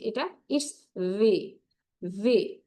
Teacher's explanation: ভি এর উচ্চারণটা হচ্ছে ভি এবং বি এর মাঝামাঝি